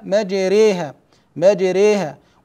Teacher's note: فهنا قربنا فتحه الراء من الكسره فرققنا الراء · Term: الاماله